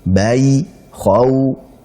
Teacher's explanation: Perbedaannya adalah kalau mad lin itu terjadi ya rumusnya adalah sifat lin. Sifat lin itu waw sukun sebelumnya fathah, ya sukun sebelumnya fathah. Jadi ai atau oi, kemudian au atau ou.